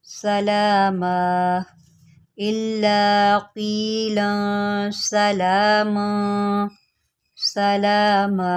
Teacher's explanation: وقف کی صورت میں دو زبر آیا ہے اور میں نے اس کو الف سے بدل دیا ہے